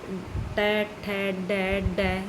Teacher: ये अपनी जीभ ऊपर मुर्दा से टच हो रही है